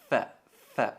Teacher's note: la letra fa es pronunciada apretando la extremidad de los incisivos superiores sobre el interior del labio inferior · Tocamos los dientes en el labio inferior.